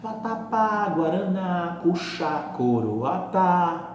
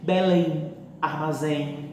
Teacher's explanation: São palavras que a sílaba mais forte é a última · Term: oxítonas